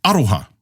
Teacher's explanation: aroha stresses the first syllable of the word